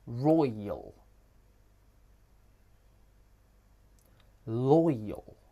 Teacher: This starts with the oi diphthong and ends in the schwa.